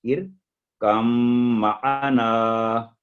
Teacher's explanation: ارکم معنا، جیسے با ہے ہی نہیں، ایسے ہی اس کو پڑھنا ہے. ارکم معنا، میم پر کیونکہ تشدید ہے تو 2 سیکنڈ گنا کر کے تھوڑے جو ٹھہر کے